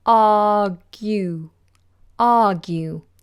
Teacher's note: down argue down now notice how I pronounce the word argue I do not pronounce the R the letter R I just do an open vowel